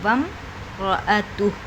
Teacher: حمزہ نہیں پڑھے، الف نہیں پڑھی جائے گی، خالی الف ہے، میم ساکن ہے، اور میم کے بعد رایا ہے تو میم کی آواز کو ظاہر کریں گے